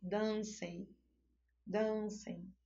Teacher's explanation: o E, né, é a forte e o M vai representar a semivogal, pois ele vai ter o som de I.